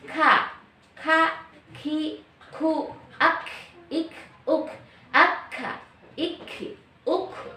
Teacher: Yang penting dia keluar dari dari pangkal lidah bagian luar. Tapi karena dia memiliki sifat hams dalam keadaan apapun, maka membacanya menjadi ka. Harus udara keluar, tidak ka begitu, tapi ka, ki, ku, ak, ik, uk, akka, ik, uk.